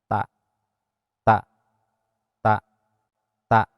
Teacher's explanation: Ta ieu kaluarna ujung lidah didorongkeun kana gusi. Gusi gigi depan atas. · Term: huruf ta